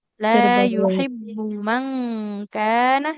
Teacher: yuhib tidak yuhibb karena mimnya dia tidak bertasdid ibu ya maka tidak usah ditahan